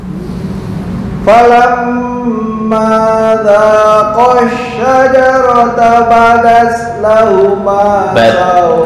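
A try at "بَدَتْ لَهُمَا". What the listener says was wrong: Sebentar, untuk badat, badat bukan badas, beda ya. Badat, badat lahuma, badat sukun dulu tak ya, baru desis.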